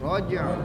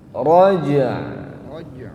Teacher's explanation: Jadi jimnya sukunkan, baru ainnya dialirkan.